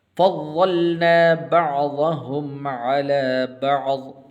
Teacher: فضلنا ایسے نہیں پڑھنا، فضلنا نہیں پڑھنا. ضاد کے اوپر شد ہے، تو اس حرف کو آپ نے مشدد پڑھنا ہے